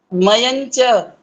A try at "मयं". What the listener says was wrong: हाँ, यही है, मयंच। ये च आ गया ना, च, तो च छ ज झ निय, ये वाला मयम नहीं बोलना था, ये गलती है।